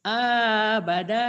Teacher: yang panjangnya awal sama akhir tengahnya pendek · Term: panjang pendek